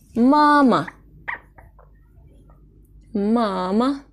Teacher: hecedeki harflere göre bir kat daha uzun ve yüksek okunur mesela mama mama iki hece var ve ilk heca vurgulu dur